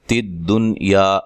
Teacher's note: تدنیا یہاں نون ساکن کا اظہار ہے، اظہار مطلق، یا الف مدہ ہے.